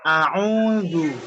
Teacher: Makhraj hamzahnya itu di bagian belakang, lidah tenggorokan bagian bawah